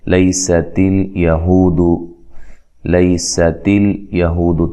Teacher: تا لام کو ہلانا نہیں ہے، سین کو باریک سیٹی سے ادا کرنا ہے